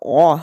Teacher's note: it's like pushing your tongue really far back making an a sound